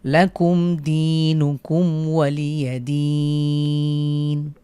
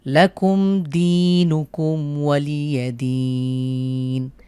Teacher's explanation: শেষে এক আলিফের পরে ওয়াকফের কারণে 3 আলিফ টেনে পড়ব